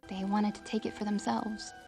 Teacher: the T sound usually gets dropped